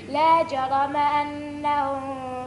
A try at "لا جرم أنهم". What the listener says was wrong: لا ما تعملش غنى لا جرم أنهم في الآخرة هم الأخسرون.